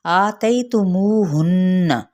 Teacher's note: نون پہ جب ہم کریں گے غنہ تو اس حرکت کو لمبا نہیں کریں گے